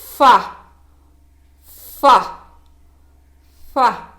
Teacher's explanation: இது மேல் பற்களின் ஓரம் மற்றும் உதட்டின் நடுவில் இருந்து உச்சரிக்கப்படுகிறது